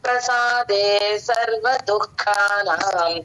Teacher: రావాలి క కి కానీ దూ కి రాకూడదు విసర్గ హాఫ్ ఏ పలకాలి విసర్గ తర్వాత క గుడి అక్షరం వచ్చింది కనుక విసర్గ హెచ్ అని హాఫ్ వరకు పలకాలండి · ఉంటుందండి విడివిడిగా దుఃఖ ఖ ప్రాక్టీస్ చేసి తర్వాత కలిపితే తప్పు రాకుండా ఉంటుందండి మహా ప్రాణం ఖచ్చితంగా రావాలి క కి కానీ దూ కి రాకూడదు